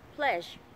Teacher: người ta sẽ tưởng tượng là âm j trở thành một cái phần âm cuối của từ đấy chứ không phải là một âm tiết thứ hai nữa